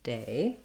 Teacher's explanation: you hold your A longer and you relax and close your mouth as you're saying that vowel A